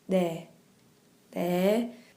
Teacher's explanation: With the N sound, if you listen to the word for yes, 네, 네, has a slight D sound to it even.